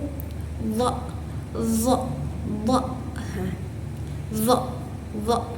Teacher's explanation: Huruf d ini keluar dari ujung lidah dan ujung gigi atas. Nah, dia itu bersifat majhur. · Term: huruf do